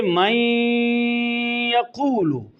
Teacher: متقاربین قریب المخرج قریب الصفات ہوں، ناقص پہلے کی کوئی نہ کوئی صفت باقی رہے پہلے ساکن حرف کی، جیسے کہ من یقول، اب نون کا یا میں ادغام ہوا ہے، یہ قریب المخرج نہیں ہے، قریب الصفات ہیں، تو من یقول میں نون کی صفت غنہ باقی ہے